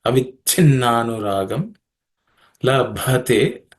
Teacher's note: The second cha is aspirated cha, which is the second letter in the cha varga or cha class of consonants.